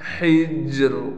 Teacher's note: قسم الذی حجر، یہاں بھی ہا کو ہم صاف پڑھیں گے، جیم پر قلقلہ کرنے کے ساتھ ہلکا سا را بھی نکالیں گے